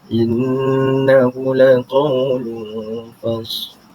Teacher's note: innahu adalah berhukum tajwid idgham bi gunnah musyaddah ataupun digelar sebagai wajibul gunnah, di mana padanya wajib didengungkan sebanyak 2 harakat. Inna wajib didengungkan 2 harakat bagi menyempurnakan bacaan pada kalimah tersebut.